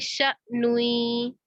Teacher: हमजा को झटके के साथ अदा करेंगे